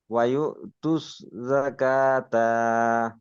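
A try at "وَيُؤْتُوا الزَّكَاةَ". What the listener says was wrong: ও তা টান দিবেন না, জাকা কাপ টান হবে, তা টান হবে না, তা টান হয়ে যাচ্ছে। জাকাতা, তা টান হবে না মত্তরে।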